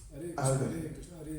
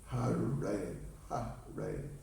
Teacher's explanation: А вот еще к разным видам мантры, да, то есть когда повторяешь, как надо говорить хари, то есть, да, а иногда х букву не выговариваешь, когда быстро читаешь, и говоришь аре